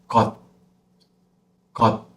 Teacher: we have to cut and close. That's why it sounds like got. Very short T sound.